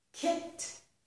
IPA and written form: kɪt (kit)